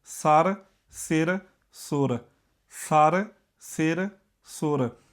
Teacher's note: ਬੋਲਣ ਲੱਗਿਆਂ ਤਿੰਨਾਂ ਨੂੰ ਇੱਕੋ ਜਿਹਾ ਟਾਈਮ ਲੱਗ ਰਿਹਾ ਭਾਵੇਂ ਕਿ ਇਥੇ ਮਾਤਰਾ ਵੀ ਹੋਰ ਲੱਗੀਆਂ ਨੇ ਪਰ ਇਹ ਮਾਤਰਾ ਲੱਗਣ ਦੇ ਬਾਵਜੂਦ ਇਹਨਾਂ ਸ਼ਬਦਾਂ ਦਾ ਬੋਲਣ ਦਾ ਟਾਈਮ ਨਹੀਂ ਵਧਿਆ।